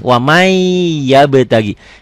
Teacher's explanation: yanmu huruf idunah katakan idgom bunah itu tulisan dan bacaannya beda Tulisannya waman bacanya wamai n-nya masuk ke y · Tulisannya ada bunyi N-nya. Bacaannya N-nya hilang. Melebur tuh. Kalau di Quran cetakan Indonesia nanti berlaku hukum nih, setelah nun mati ada huruf bertasdid. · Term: idgham bigunnah